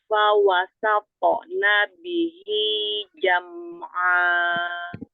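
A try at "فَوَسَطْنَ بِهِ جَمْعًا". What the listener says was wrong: Coba qalqalah sukunnya jangan ada hamzah. Fawasapo nabihi jam'a. Jam'a, mim sukun, kasih bainnya, alirkan. Tambahkan lagi sifat syiddah jahar pada baknya seperti huruf jim. Bihi, bi. Jelaskan lagi. Fawasaqona bihi jam'a. Fawasaqona. Fa, huruf fa kasih hamasnya lagi.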